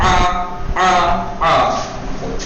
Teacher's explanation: درمیانے حلق سے نرمی کے ساتھ ادا ہوگا، نرمی کے ساتھ آ۔ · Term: عین